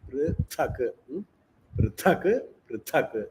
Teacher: It is a Mahaprana ta. It's not the first ta.